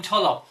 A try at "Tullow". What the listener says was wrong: Tullow. Tullow. It ends in an OW, not an AW. Yeah, Tullow.